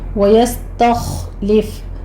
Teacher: تا کو آپ نے باریک رکھنا ہے، خو کو پر کرنا ہے، یستخلف فا پر ہمس ہوگا۔